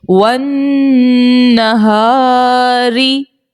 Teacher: رو کے نیچے زیر ہے اسی لیے رو کو باریک پڑھا